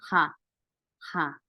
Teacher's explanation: I told you there is H sound in Korean. It's H sound, but not coming from the throat. It's like an English H, just here.